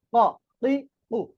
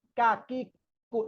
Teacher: অর্থাৎ এই জন্য কফটা হবে শক্ত করে উচ্চারণ এবং একটু ধাক্কা দিয়ে পড়তে হবে